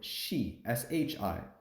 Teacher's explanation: exceptions I guess you could say for this one is that if you put this s sounding consonant with the I sounding vowel it'll become shi shi instead of C